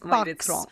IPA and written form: bɑks (box)